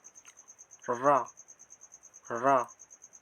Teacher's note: इसका उच्चारण करने से हमें पता चलता है कि जिह्वा पीछे की ओर मुड़ रही है। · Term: लुंठित व्यंजन